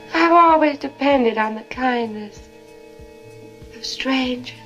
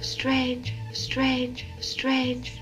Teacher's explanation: hear how there's no R in strangers strange strange strange that's a non-rodic accent but ranged and changed